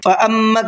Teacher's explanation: فَأَمَّا کے میم کے اوپر تشدید ہے، غنہ کریں گے